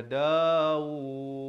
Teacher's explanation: pastikan berhenti dengan sekurang-kurang 2 harakat dan diberikan lantunan. Kerana dal merupakan huruf lantunan.